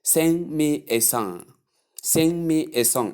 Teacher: There is no G in such pronunciations.